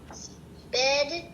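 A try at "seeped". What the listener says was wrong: Sorry, where's the P? The P comes after those double E's, so it's not sp. sorry, where the P does not come before those E's. The P comes after the E's.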